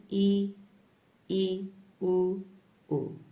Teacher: जिन स्वरों के उच्चारण में मुख द्वार लगभग बंद रहता है, देखिए पूर्ण बंद नहीं रहेगा पर लगभग बंद रहता है, तो उन स्वरों को हम समृद्ध स्वर कहेंगे। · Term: संवृत स्वर